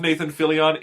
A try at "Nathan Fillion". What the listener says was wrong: Why do you always say his name like that? No, Nathan Fillion. It's not Fillion.